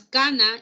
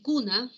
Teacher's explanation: En el caso de las palabras cana y cuna, la oposición está dada por A, U. Entonces, en cana, la vocal A es una vocal central baja y abierta, mientras que la vocal U es una vocal posterior alta y cerrada. Entonces, si yo reemplazo a la vocal A por la vocal U en esta secuencia, voy a decir, bueno, el resultado es el que todos pueden observar, que cana tiene un significado y cuna tiene otro significado.